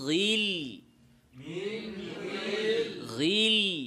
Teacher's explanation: আমরা জানি যে ইস্তিলাহ হরফগুলোতে কাসরা হলে তাফখিমের মাত্রা কমে যায়, মোটাটা কম হয় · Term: গাইন